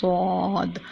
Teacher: हम स्वाद बोलेंगे तो जो जुबान का किनारा है वह ऊपर वाले दांतों की जड़ से लगेगा जुबान के किनारे को हमने ऊपर वाले दांतों की जड़ से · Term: मोटा रूप